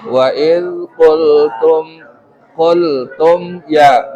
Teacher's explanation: Mem memiliki sifat yang disebut dengan bainiyah di antara syiddah dan roghawah. Syiddah itu artinya tertahan, roghawah mengalir. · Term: idhar syafawi